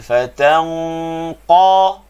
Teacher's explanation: Jadi suara dah pergi ke bibir, bukan pergi ke makhraj qaf. Makhraj qaf di pangkal lidah. Fatanqa, qa tanpa muncung.